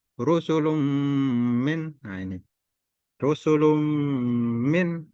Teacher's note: bertemu dengan min, dibaca dengan dengung, dengung. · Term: idgham bi gunnah